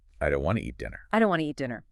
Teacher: A native speaker will completely drop the T and don't, and they will seamlessly blend want to into wanna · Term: connected speech